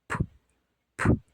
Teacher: Коли вимовляємо, чуємо шум. Отже, цей звук глухий.